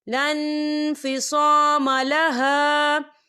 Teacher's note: یہ دیکھیں لن، یہاں نون ساکن ہے اور نون ساکن کے بعد فا آ رہا ہے، اور فا جو ہے اکفا کا ورڈ ہے، تو ہم یہاں اکفا کریں گے، نون ساکن کی آواز کو ناک میں چھپائیں گے